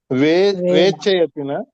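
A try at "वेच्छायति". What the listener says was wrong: దీర్ఘం ఉండాలి కదా.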